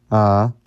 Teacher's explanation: pretty much just a less aspirated breathy voice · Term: slack voice